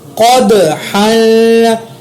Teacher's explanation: دال پر میں نے قلقلہ کیا, قاف کو موٹا بھی ادا کیا, ہا پر اخفا بھی کیا کیونکہ آگے قاف اخفا کا ہے.